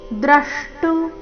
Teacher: ದ್ರಷ್ಟು ದ್ರ ಮೇಲೆ ಆಘಾತ